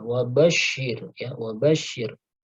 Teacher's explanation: Shin tasydid ya, harus diingat setiap huruf tasydid kecuali nun dan mim, maka suara kita ditekan ya, ditekan.